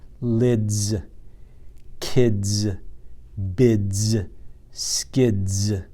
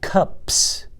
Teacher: the s is saying a z sound that's because the d is in front of it and is voiced cups has a that's not voiced so that's just forks that